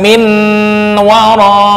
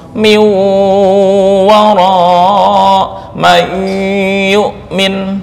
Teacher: Miu bukan min wara ya. Jadi melentur dari nun masuk ke wawu. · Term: idgham nakis